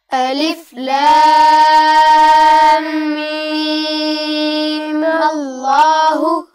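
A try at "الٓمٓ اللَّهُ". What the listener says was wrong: جی بیٹا اس پہ مد نہیں کریں گے، آخری میم پر مد نہیں ہوگی، آپ اس کو صرف 2 حرکات تک کھینچ کے اس کے فوراً بعد آپ کو میم کو لام سے ملانا ہے، ٹھیک ہے؟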